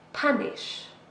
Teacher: This is a verb, 2 syllables, and we stress the first one.